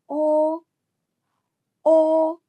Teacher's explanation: When pronouncing O, keep your lips naturally rounded with the tongue in a need high position and the mouth slightly open. Here the tongue is slightly raised compared to a but remains relaxed and doesn't touch the roof.